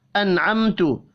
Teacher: नून साकिन के बाद आइन है, इजहार हल्की होगा, गुन्ना नहीं होगा।